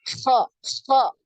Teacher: Huruf kho ini dia punya aliran nafas yang banyak ya, maka ada kayak suara ngorok ya, kho gitu ya.